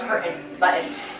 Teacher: I don't even like put my tongue to the roof of my mouth.